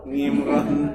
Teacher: Kalau sudah ke daerah baratnya lagi, itu ain menjadi ngain. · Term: Ain jadi ngain